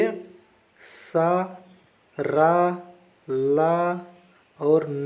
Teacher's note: इनको बोलने पर जीभ जो है मसूड़े में छू जाती है। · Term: वर्ष ध्वनि